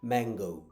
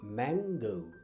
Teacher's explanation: এরপরে সাউন্ডগুলো আরও সহজ, এটা যেটাকে আমরা এম বলি, এটা আসলে এটাকে আমরা বলি ম সাউন্ড, দুই ঠোঁট দিয়ে ম